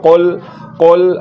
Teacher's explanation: دو نقطوں والے کاف کو اوپر یعنی کہ موٹا کر کے پڑھا جاتا ہے